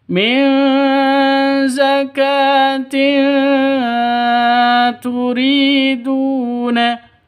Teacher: Min zakatin turiduna, tanwin zakatin itu, tanwin bertemu dengan ta, samar didengungkan, siap-siap ke huruf ta-nya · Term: ikhfa hakiki